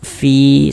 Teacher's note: huruf yang memiliki harakat kasrah yang huruf fa ini kan maka kita baca panjang dua harakat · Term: dibaca panjang, mad tabi'i